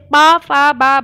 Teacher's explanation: ओष्ठ होते हैं, यानी आपकी होठें दोनों बोलने पर मिलती हैं।